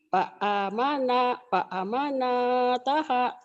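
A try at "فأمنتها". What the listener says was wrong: Salah. Coba lihat baik-baik tulisannya. Nggak ada nunnya, Bu. Coba benerin. Fa'amataha.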